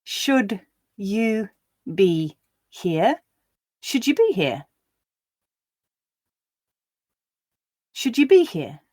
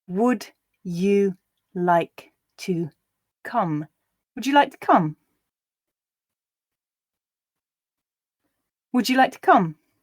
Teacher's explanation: you may now be able to guess that we find this j sound where a d sound is followed by a ye sound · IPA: /dʒ/